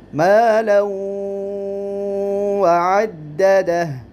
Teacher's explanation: تنوین دو زبروں کی ہے اور اس کے بعد حروف ادغام میں سے حرف واو آیا ہے تو ادغام بالغنہ ہوگا